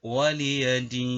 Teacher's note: Hukum bacaan yang ada dalamnya adalah mad tabi'i 2 ketuk. Dini ada bacaan mad arid lisukun jika diwakofkan sehingga dibaca panjang.